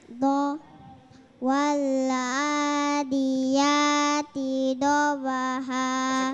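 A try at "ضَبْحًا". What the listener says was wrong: Masih kuat sama dengan al. Bo. Bo. Dobaha.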